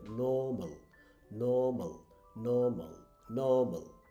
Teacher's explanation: আর উচ্চারণ হবে না, একটু টান হবে